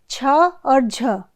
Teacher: तालव्य का भी आप देखिए कि तालू से इन वर्णों का उच्चारण हो रहा है